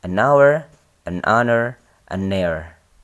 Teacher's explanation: A house versus an hour. Nah, kita menggunakan en untuk kata hour meskipun di situ ditulis dengan huruf H di awal kata. H di sini dibaca silent. Dia terdengar vokal ya, vokal atau soundnya sound vowel.